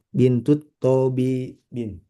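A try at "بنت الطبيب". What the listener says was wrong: Tonya pendek, B-nya panjang. Bintut Tobibi. Bintut Tobibi.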